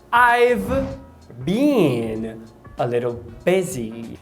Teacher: Eu percebi um apagamento do V. Em vez de falar I've, eu percebo só o I. A palavra been, pela fonologia, a vogal é o E longo, então been.